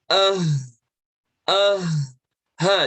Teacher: ha itu muncul dari pangkal tenggorokan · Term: huruf H